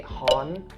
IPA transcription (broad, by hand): hɔːn